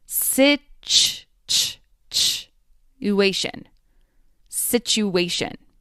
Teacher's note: In the middle of this word, there's a T sound and a Y sound right next to each other.